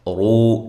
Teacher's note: یہ واو مدہ بھی ہے، ایک الف کے برابر لمبا کیا جائے گا